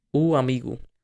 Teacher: You can see a pause in between to separate the different vowel sounds. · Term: glottal stops